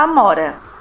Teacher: na palavra amora, a letra A tem o som aberto e forte